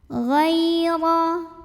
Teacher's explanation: ada huruf lin karena ada ya sukun yang didahului fathah, maka dibacanya dilembutkan. Ghaira, huruf ra dibunyikan secara tafkhim karena ra-nya berbaris fathah, maka dibacanya lembut.